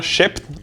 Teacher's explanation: Le double pp /pp/, qui devient en allemand -pf- /p͡f/ en milieu de mot, reste par contre -p- /p/ en yiddish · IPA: /ˈʃɛpn/